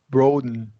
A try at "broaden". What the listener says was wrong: You said broaden, and that's a short O.